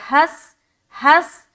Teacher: ہا سین سے ملتے ہوئے سیٹی کی آواز ظاہر ہوگی